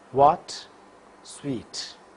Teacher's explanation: The lips are in rounded position. Vocal cords vibrate for wa. Va will occur initially and medially.